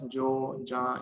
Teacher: in Spanish, the phoneme y is pronounced as j in many varieties, especially in Latin America